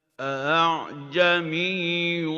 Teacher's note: the second hamza is hamza tasheel, to facilitate. So we are not going to make it confirmed like the first.